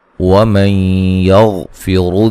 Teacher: نون ساکن کا ادغام مع الغنہ ہے